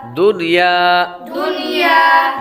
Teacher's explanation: یہاں پر غنہ نہیں کریں گے کیونکہ نون ساکن کے بعد یا حروف یرملون میں سے اسی کلمے میں آ رہی ہے، ایک کلمے میں آ رہی ہے، تو اس وجہ سے یہاں پر غنہ نہیں کریں گے۔ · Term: اظہار مطلق